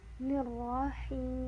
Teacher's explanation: Nah, sini ada ro lagi dan hi. Huruf h di sini adalah berbaris kasrah, jadi agak agak meringis dan panjangnya 2 harokat sebelum membaca huruf mim.